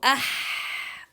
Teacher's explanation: ayn and ha, it is produced from the middle of the throat